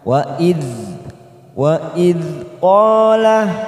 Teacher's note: fathah diikuti alif, dua harokat kita panjangkan